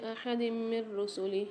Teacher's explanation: 2 زیر کی تنوین کے بعد میم مشدد آ رہی ہے، غنہ کر کے پڑھیں گے